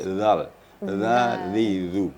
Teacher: ujung lidah dengan ujung gigi atas akan lebih halus lagi